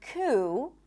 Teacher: in the word coup, there is no P, even though it's in the spelling. Coup. All right?